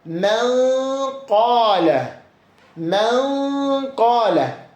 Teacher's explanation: sükunlu nundakı n səsi gizlədilərək iki hərəkə miqdarında uzadılaraq burun boşluğundan çıxarılaraq oxunur. Səbəb sükunlu nundan sonra ixfa hərflərindən bir olan qaf hərfinin gəlməsidir.